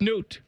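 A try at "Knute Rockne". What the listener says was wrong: Newt? Is it Newt or K-Newt? I think there's a little Canute. I think you pronounce that hard K at the beginning. breeze through it. Canute Rockney.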